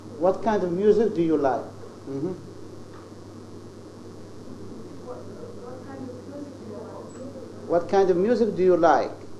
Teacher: the stress or the high pitch is on like. Okay, so this is like is 3-1.